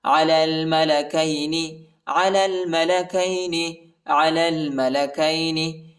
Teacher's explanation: یا اور الف نہیں پڑھا جاتا، یا اور الف کے اوپر حرکت نہیں ہے۔